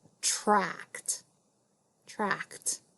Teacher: even though we hear the t sound, we know that's ed at the end